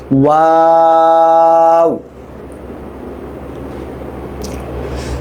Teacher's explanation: ওয়াও ওয়াও, ঠোঁট গোল করে শুরু, গোল করে শেষ